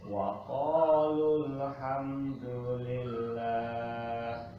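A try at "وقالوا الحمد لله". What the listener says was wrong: kurang diangkat lnya coba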